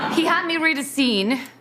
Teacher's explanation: so she stresses 'had' and 'scene'